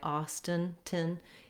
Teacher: Austin also has first syllable stress and the ah vowel. And I wrote it here with the letter I, Austin.